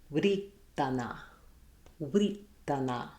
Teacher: This word would have been pronounced with the w and the r sounds, but the r would have been rolled like r. So we would have wuh-ri-ta-na, writana.